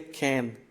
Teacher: In Austrian Standard German, the vocalic member of the diphthong has a less open pronunciation.